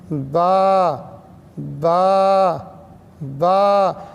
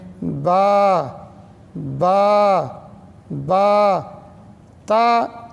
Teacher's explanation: اسے چاہیے کہ دونوں ہونٹوں کو نہ ملائے اور اس طرح پڑھے، الف الف الف. با با میں دونوں ہونٹ ملتے ہیں لیکن بہت سختی کے ساتھ نہیں ملانا چاہیے، ملائم انداز سے آرام سے ملائیں